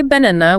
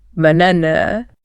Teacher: the first and last syllables aren't A's at all. They're just that relaxed sound. The A has been completely erased. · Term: schwa